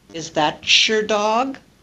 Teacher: t plus y with coalescent assimilation produces ch the affricate sound ch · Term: palatalization